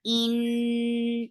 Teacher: Noon will get sifa of gunna, and this is akmal gunna.